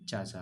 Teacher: तो इसमें तालू से प्रयोग होने वाला च है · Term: तालव्य ध्वनि